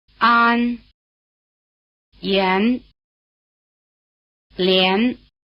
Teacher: Here after the semivowel, the AN takes on the sound value of EN as in hen.